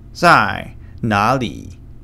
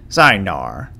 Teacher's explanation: typically in the north, they use this R sound